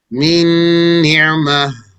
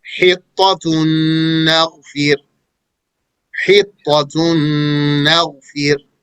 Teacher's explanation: the noon and the tanween that are at the end of one word are merged into the noon of the following word